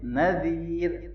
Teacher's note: ذال کو نرمی سے پڑھنا ہے اور یا مدہ ہے